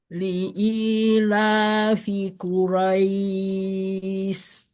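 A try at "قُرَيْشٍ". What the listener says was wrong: Jangan is tapi ish. Ya jadi sin ya, bedakan dengan sin titik tiga ini ya.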